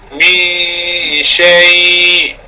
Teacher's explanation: sembunyikan nun kepada shin pada huruf-huruf ikhfa. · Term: sifat ikhfa